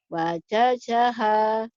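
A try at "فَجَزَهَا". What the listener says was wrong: bukan wa. ibu fa-nya sering ke wa. Fajazaha, ini keras, yang ini rapuh. Fajazaha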